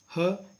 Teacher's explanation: ऐसा व्यंजन होता है जिनका उच्चारण प्रमुख रूप से कंठ द्वार के प्रयोग द्वारा किया जाता है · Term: काकल्य व्यंजन